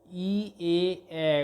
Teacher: ই, এ, কে একই সঙ্গে যেমন সম্মুখ স্বরধ্বনি বলে, তেমনি এখানে ই, এ, উচ্চারণের সময় ওষ্ঠ দুটি কিছুটা প্রসারিত হয়ে যায় বলে একে প্রসারিত স্বরধ্বনি বলা হয়।